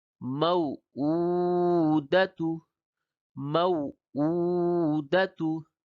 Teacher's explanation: موعودت، یہاں پہ دیکھیں غور کریں یہ حرف لین ہے واو، اس کو نرمی کے ساتھ ادا کیا گیا